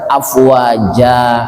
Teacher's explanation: Mad iwad itu fathah tain, kemudian ada mad, ada alif. Yang tadinya tertulis afwajan, ketika berhenti dibaca afwaja. Ja panjangnya satu alif, dua ketukan.